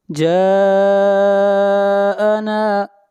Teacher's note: جا کے اوپر مد متصل ہے، اس مد کو 3 الف کے برابر کھینچ کر پڑھیں گے۔